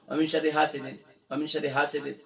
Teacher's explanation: اب حاسد میں دیکھیں ہا کے بعد الف مدہ ہے، ایک الف کی مقدار کھینچیں گے. اکثر پڑھتے ہیں وَمِن شَرِّ حَاسِدٍ، وَمِن شَرِّ حَاسِدٍ، حاسد، اکثر پڑھتے ہیں حاسد، سیدن نہیں ہے، سین کے نیچے صرف زیر کی علامت ہے، کھینچیں گے نہیں.